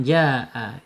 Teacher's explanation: Mad wajib muttasil panjangnya berapa? Panjangnya 4 sampai 5 harakat gitu ya.